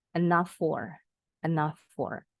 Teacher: Karena bunyi F-nya sama nih. F itu konsonannya tidak berbunyi. Pita suara kita tidak bergetar.